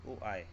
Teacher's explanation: अर्धसंवत्र होता है ओ आए, जिनके स्वरों के उच्चारण में मुख आधा बंद होता है।